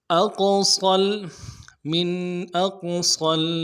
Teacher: من اقصل، قاف قلقلہ میں سے ہے، ساکن ہے تو جب قلقلہ ہوگا اقو قلقلہ کریں گے، قاف کو موٹا بھی کریں گے۔ اقصل، صاد کو آگے لام کے ساتھ ملائیں گے، صاد کی سیٹی موٹی ہوگی۔